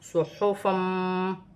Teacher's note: 2 زبر کی تنوین میں غنہ کیا جائے گا کیونکہ آگے میم مشدد آ رہی ہے، ادغام مال غنہ کا قاعدہ ہے۔